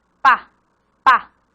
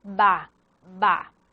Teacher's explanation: Son sordas cuando no vibran las cuerdas vocales, como pa, pa. Y son sonoras cuando vibran las cuerdas vocales, ba, ba.